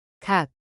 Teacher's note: An aspirated K or a tense K at the bottom just sounds like a plain K.